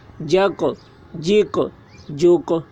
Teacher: قاف حروف قلقلہ میں سے ہے اور اس پر جزم ہے، اس لیے قاف میں قلقلہ ہوگا۔